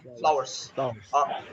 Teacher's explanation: if you talk about the American, which is the more popular, I think, accent, then we say flowers with the R